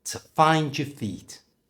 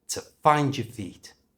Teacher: The first is the O at the end of to, so that becomes t. And we've replaced the O-U-R at the end of your with a simple schwa sound. So instead of your, it becomes y.